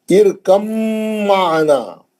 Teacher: آخری مثال، یہ مثال ایسی ہے جس میں تقریباً لوگ غلطی کرتے ہیں، کیسی ہے، ارکم معنا، با ساکن کا میم مشدد میں ادغام میں متجانسین ہو گیا۔ اب با نہیں پڑھیں گے کیونکہ با بھی شفی ہے، میم بھی شفی ہے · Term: ادغام متجانسین